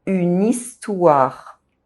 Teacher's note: In spoken French, when a word ends with a pronounced consonant and is followed by a word beginning with a vowel, we link these two, the consonant and the vowel, and say them together in the same syllable. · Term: consonant links